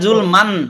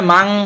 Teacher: কাফ থাকার কারণে এই মানটা মাং হয়ে গেল, মানে ইকফার গুন্না চলে আসলো এখানে।